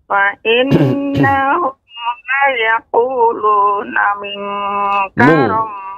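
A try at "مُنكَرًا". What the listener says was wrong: Mungkara, bukan minka. Ya, ulangi lagi,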